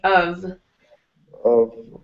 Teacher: the F is more like a V sound, of. Of. Mm-hmm.